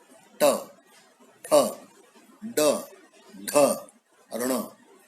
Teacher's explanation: इनका उच्चारण जीभ की मूर्धा से लगने के बाद होता है। जीभ के जो पीछे का भाग है वहां पे जाकर के जब जीभ लगती है, यानी दांतों के पीछे के भाग में जाके जीभ लगती है, तो वहां पर है ट, ठ, ड, ढ, ऋण, बाण वाला ऋण। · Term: मूर्धन्य